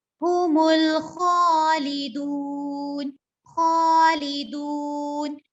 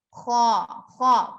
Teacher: ख्वा जहां पर भी आएगा इसको मोटा पढ़ेंगे, ठीक है। हुमुल खालिदून, खालिदून ऐसे नहीं पढ़ेंगे।